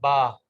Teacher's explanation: دونوں ہونٹوں کے خشک حصے، دونوں ہونٹوں کے اوپر اور نیچے والے ہونٹوں کا جو خشک حصے ہیں وہ جب آپس میں مل جائیں تو اس سے با ادا ہوتا ہے